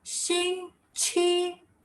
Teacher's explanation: Now the last tone is the rising tone.